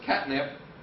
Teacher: And then lastly, there's catnip, where you don't actually have a T at all, where for most native speakers of American English, in casual speech, the tip of your tongue does not touch your alveolar ridge at the point where you're making that stop. It does to the end, but it doesn't get there until you start to make the end. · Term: glottal stop